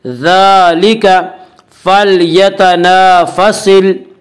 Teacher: अलिफ से पहले हमेशा ज़बर होता है। अलिफ मद्दा को 1 अलिफ के बराबर खींच कर पढ़ेंगे